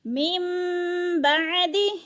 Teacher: من بعد، ادھر اقلاب ہو رہا ہے، نون ساکن کے بعد حرف با آ جائے تو نون ساکن کو نہیں پڑھتے، نون ساکن کو میم میں بدل کر پڑھتے ہیں، یعنی میم بعد، اور عین کو حروف ہلکی میں سے ہے، حلق سے نکالیں گے۔